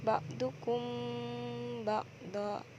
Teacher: Adapun tanda lingkaran berwarna merah muda, tajwidnya adalah ikhfa syafawi, dibaca sama samar karena mim mati bertemu ba